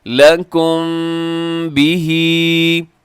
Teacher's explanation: ٹھیک ہے جی، دیکھیے گا یہاں پہ ہؤلائی، آگے حاججتم فیما لکم به علم، لکم بھی، یہاں لکم میں میم ساکن کے بعد با ہے، تو یہاں پہ ہم اخفاء شفی کریں گے، یعنی میم پہ تھوڑا سا آواز کو ناک میں رکھیں گے